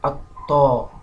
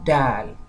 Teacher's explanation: And the corresponding letter to ta is also dal. While ta is made or pronounced heavily, dal is pronounced lightly.